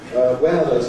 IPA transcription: ˈweəðəz